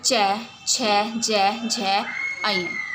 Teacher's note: दूसरा आता है आपका तालु, जो तालु से बोले जाते हैं, जीभ के परस्पर टकराने से, वो आते हैं चै वर्ग में